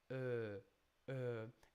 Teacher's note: You have to round your lips. Uh, it's not really an oo and it's not an e. It's in between. So the lips are rounded but quite open.